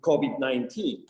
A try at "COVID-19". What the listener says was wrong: Kobe the 19, Kobe. Yeah, he's kind of using the B sound instead of a V. I think that's pretty typical in Spanish.